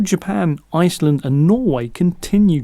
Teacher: The R will not be pronounced after a long vowel sound, okay, in British pronunciation, particularly in the RP accent.